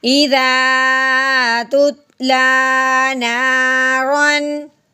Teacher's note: نون الف زبر نا، رو دو زبر رن، نارن. تنوین کے بعد آگے حرف حلقی میں سے ہے اس لیے تنوین پہ غنہ نہیں کریں گے